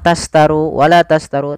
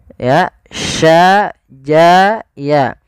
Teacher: Kita sesuaikan makhraj daripada huruf shin. Makhrajnya adalah tengah lidah kita. Ja, sya, ya itu tengah lidah.